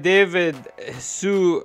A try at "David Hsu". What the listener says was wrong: technically it's pronounced shu but everyone says sue